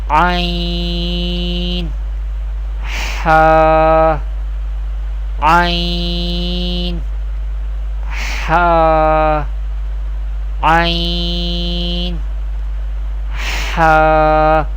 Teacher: Ain ha pronounced from the middle part of the throat.